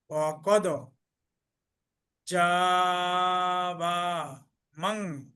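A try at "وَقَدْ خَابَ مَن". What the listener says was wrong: ওটা জিম না তো, এটা খা।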